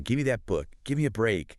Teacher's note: the vowel sound in give might weaken slightly, and the V sound at the end links and merges almost seamlessly with the M sound of gimme